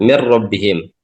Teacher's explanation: nunnya e hilang ya termasuk sifat ghunahnya nun juga hilang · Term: idgham kamil